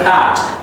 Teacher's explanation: P is very powerful, plosive, pushing out air outside, but verb is ending on the K sound, and the K sound, K is unvoiced. So the final D would be pronounced like a soft T.